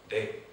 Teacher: una d uno cierra el aire y lo abre